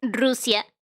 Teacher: certainly in Spanish it's Rusia. So it has a rolling R.